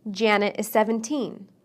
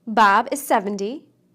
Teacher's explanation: the T in the tens sounds more like D